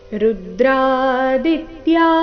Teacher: ಋ ಮತ್ತೆ ದಿ ಮೇಲೆ ಆಘಾತ